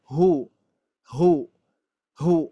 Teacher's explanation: harus jelas ya di pangkal tenggorokannya di ee di pangkal tenggorokannya harus jelas dan juga bunyinya sedikit menggemak ya sedikit menggemak